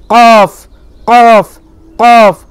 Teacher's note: এটা হচ্ছে আপনার একেবারে জিভের গোড়া হ্যাঁ জীভের গোড়া তার বরাবর তালুতে লাগিয়ে এটা বের হয়